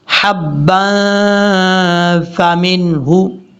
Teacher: اور یہاں پر یاد رکھیے گا، با کے اوپر جو دو زبر ہیں، دو زبر کے بعد فا آ رہا ہے، یہاں پہ غنہ ہو رہا ہے اخفا کا، نون تنوین کا اخفا، یہ یاد رکھیے گا۔ 2 سیکنڈ کے قریب غنہ کریں گے